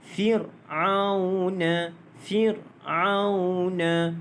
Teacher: Baik, di sini dia kalau kita tengok tidak ada hukum tajwid lah, cuma satu sahaja, iaitu huruf ra yang dimatikan sebelumnya berbaris di bawah, maka dibaca dengan nipis lah.